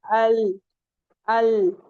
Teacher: तो अल अब आप अल बोलिए तो देखिए आपका जो टी टंग है वो कहां पे लग रहा है। ऊपर के जो फ्रंट वाले जो आपको सनाए औलिया बताए गए थे वहां जाके उनके मसूड़े जो होते हैं जहां से हमारे टीथ निकलते हैं उसके ऊपर का जो पार्ट होता है वहां से निकलेगा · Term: लाम